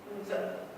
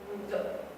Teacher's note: With the point of articulation is bilabial upper and lower lip touch each other. And is voiced because the vocal cords are vibrating